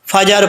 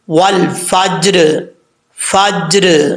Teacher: جیم کیونکہ ساکن ہے، اس میں قلقلہ ضرور ہے کیونکہ حروف قلقلہ میں سے ہے